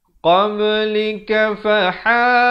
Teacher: Ha pedas, makhrajnya di pertengahan kerongkong.